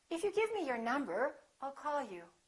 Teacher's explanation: So to indicate that you're not finished, that you have something more to say, let your pitch go up at the end of the first part of your sentence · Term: rising intonation